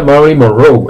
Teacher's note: Pues sí, yo he estado en toda la vida pronunciando a Marilyn Monroe, toda la vida Marilyn Monroe, la habéis pronunciado también como yo, y llegué a Estados Unidos y se pronuncia Marilyn Monroe, el acento va al final